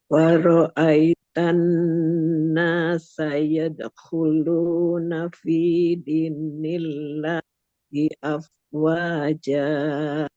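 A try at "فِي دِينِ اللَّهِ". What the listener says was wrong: Ini kok-nya udah bagus, tapi jangan double N, Bapak Ibu. Jangan din, jangan din, jangan din, oke? Itu double N. Di, nil, di, nil.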